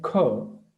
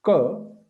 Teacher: means the first, the Hari Kamala and Hari Gada, they are like unaspirated, but Hari Khadga and Hari Ghosha, they are aspirated because when we say Ka and when we say Kha, so Kha also sounds like Ka, but with an extra aspiration, the H sound in it